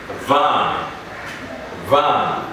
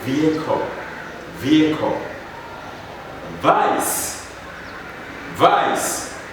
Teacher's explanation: it has to be voiced so there must be a vibration of the vocal cords secondly your top teeth is put on your bottom lip lip